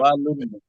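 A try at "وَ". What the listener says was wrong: ওয়া টান হচ্ছে কেন? ওয়াও টান হবে না তো, হরকতের উচ্চারণ তাড়াতাড়ি করতে হয়।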